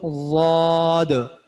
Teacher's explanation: ضاد کو موٹا کر کے پڑھنا ہے، اور زا کی طرح بھی نہیں پڑھنا اور دال کی طرح بھی نہیں پڑھنا ہے۔ ان دونوں کو کی درمیانی کیفیت جو ہے وہ ضاد کی ہے، ٹھیک ہے۔